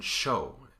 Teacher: The next place is just a little bit behind that, maybe a quarter of an inch or a half centimeter. If you move your tongue just a little bit back, instead of getting S, you get sh as in show